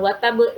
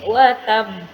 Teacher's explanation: Jadi karena ada tasydid di atas ba tadi. Jadi itu yang sebenarnya qalqalah kubra.